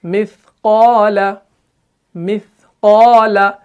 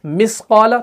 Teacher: इसी तरीके से हमजा सा ज़बर अ, حمزہ ثا زیر اث، حمزہ ثا پیش اث، اث، اس، بالکل ہلکا پڑھنا ہے اس کو، آپ نے ایسے نہیں پڑھنا ہے کوئی تا کو سین جیسی آواز بنائے، اس، اس طریقے سے نہیں پڑھنا ہے، اس، بس زبان کا جو سرہ ہوگا وہ آپ نے ثنایا علیہ کے کناروں سے لگانا ہے اور زبان کو تھوڑا سا اتنا سا باہر رکھنا ہے تو یہ ادا ہو جائے گا۔